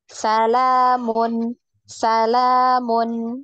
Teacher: huruf nun itu ada sifat tawasud ya atau bainiyah. Nah, alirkan sedikit lagi biar tidak ada tawaludnya ya, tidak ada pantulan ya.